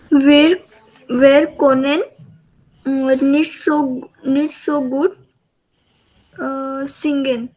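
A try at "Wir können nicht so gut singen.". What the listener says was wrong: Okay, वियर क्योनन. Okay, सिर्फ वो कोनन ऐसा नहीं आना चाहिए, क्योनन आना चाहिए. वो ओ उमलाउट है ना, तो इसलिए वो उमलाउट का प्रोनाउंसिएशन या क्योनन.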